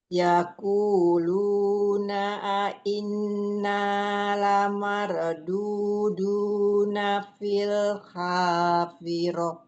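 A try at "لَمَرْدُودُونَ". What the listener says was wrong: Coba di ini roh sukunnya jangan mantul ya. Mare, mare. Lamarduduna.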